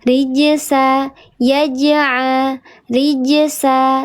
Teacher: qalqalah sughro dibacanya dia natural saja dipantulkan